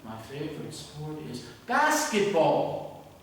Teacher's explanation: I really use rising intonation, a little bit of exaggeration